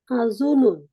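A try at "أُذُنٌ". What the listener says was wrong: উজুনুন, আজুনুন না, উজুনুন।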